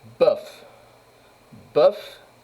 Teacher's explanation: Bœuf, c'est une syllabe fermée, donc on utilise E, la voyelle ouverte.